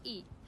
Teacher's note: if it comes in the middle of a sentence and after a consonant, then the H sound isn't usually pronounced. So he becomes E, and he looks like he's had an accident becomes he looks like he's had an accident.